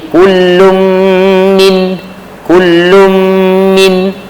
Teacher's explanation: Min tak dengung kerana nun mati bertemu dengan Ain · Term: izhar halqi